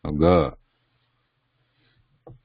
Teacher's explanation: when you sound out g, the vibration is, you can feel the vibration around in the neck, in the throat there, g. So k and k, they are muted, and g, this needs vibration, or voice. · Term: voiced